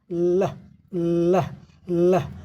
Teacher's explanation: हवा जो है जीभ के दोनों किनारों से पास होती है। देयर इज वॉइसिंग और इसमें हमारे थ्रोट में हमारे गले में हमारे गले में जो ओकल कार्ड है स्वर तंत्र है यहां उसमें कंपन होता है। · बोल कर देख लीजिए, लह लह लह, हवा जो है जीभ के दोनों किनारों से पास होती है।